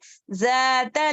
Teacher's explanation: نارا ذات ذات زا کا مخرج پراپر سے زا نہیں ہے, ز دونوں دانتوں کے درمیان تھوڑی زبان باہر آنی ہے